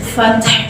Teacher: تا ساکن میں ہم حمز کرتے ہیں